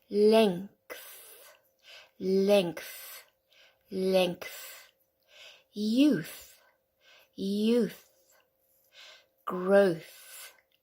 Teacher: these are the unvoiced sounds of the th alright so we don't use the larynx it's just the air coming out